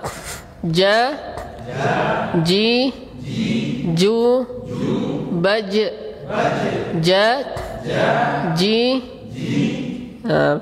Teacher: jangan sampai antum menghembuskan udara ketika menyebutkan huruf ini, karena ketika ada udara yang menghembus, dia akan menyerupai huruf C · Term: huruf jim